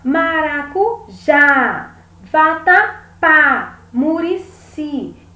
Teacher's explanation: essas palavras ela tem a última sílaba mais forte então é uma palavra oxítona depois nós temos as paroxítonas quando